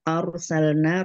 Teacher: Arsalna ra sukun dibaca tafhim tebal karena didahului dengan fathah.